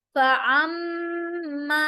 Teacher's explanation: मीम पर गुन्ना और मीम के साथ अलिफ मद्दा भी है। फअम्मा, लंबा होगा।